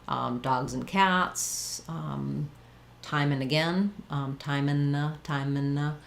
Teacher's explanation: So the and kind of becomes an n sound. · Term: reduced